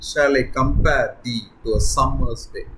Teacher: following the weak strong pattern of iambs rather than the strong weak pattern of trochees